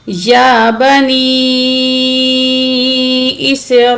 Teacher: या के ऊपर खड़ी ज़बर है, एक अलिफ की मिकदार खींच के पढ़ेंगे